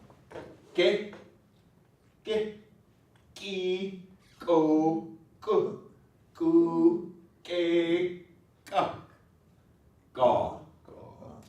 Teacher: I always say the K starts like a K and ends like a G. · There's still a k there, but it's not what we call aspirated.